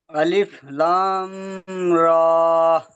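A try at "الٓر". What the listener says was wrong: লামটা আরো টান হবে আলিফ লাম লাম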